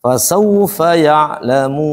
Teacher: Ada waw di sini lin ya hukumnya. Mulut kita harus dimonyongkan.